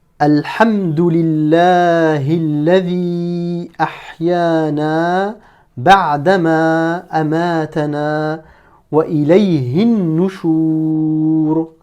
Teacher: On est passé directement du hi au noun ici. Pourquoi? Parce que on ne prononce pas la hamzat wasl ici, la hamzat de liaison. · comme on a affaire à une lettre solaire, le noun ici est une lettre solaire. Donc, en plus de ça, on ne prononce pas le lam.